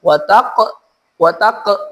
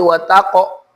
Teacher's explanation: jangan wataq, tapi wataqo, mantulnya o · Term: qalqalah tebal